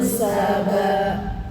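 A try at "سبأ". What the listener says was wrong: Yang nggak panjang. Saba. Kan ini ya hamzahnya kan bawahnya alif ya. Saba, nggak saba. Saba.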